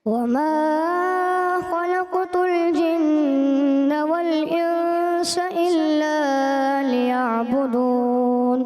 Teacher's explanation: وما میں مد اصلی تھوڑا سا آپ نے بھی لمبا کیا